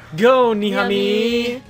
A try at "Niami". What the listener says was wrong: You have to say it, like, with a different inflection. It's not Niami, it's Niami.